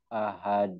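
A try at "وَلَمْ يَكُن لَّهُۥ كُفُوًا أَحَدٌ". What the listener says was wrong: Yang kedua tadi malah menekan.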